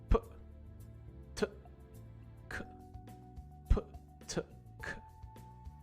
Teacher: So when we say these letters p, t, and k, those sounds are all made in our mouths by stopping the air from coming out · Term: Voiceless stops